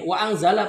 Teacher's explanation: Wa anzala nun sukun bertemu dengan huruf zai. Itu namanya ikhfa hakiki, bukan ikhfa syafawi.